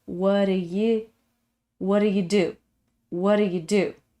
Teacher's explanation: similar to the sound of water this is a flapping sound of the t